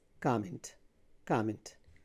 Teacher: So the stress is on the first syllable.